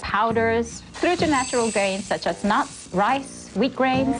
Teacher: When listing things a rise falling tone is used.